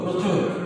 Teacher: শব্দের শুরুতে রফলা যুক্ত অয়ের উচ্চারণ সংযুক্ত হবে, অর্থাৎ ওয়ের মতো হবে। যেমন প্রচুর উচ্চারণ হবে পয়রাপালা ও চয়রস্য রচুর, প্রচুর।